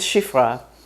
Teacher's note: it's going to be halfway between a and E English doesn't have exactly this sound